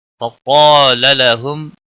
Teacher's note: قاف حروف مستعلیہ میں سے ہے اور الف بھی اس کے ساتھ میں ہے، دونوں کو پر پڑھا جائے گا. لام کے اوپر زبر ہے، اس کو لمبا نہیں کرنا ہے.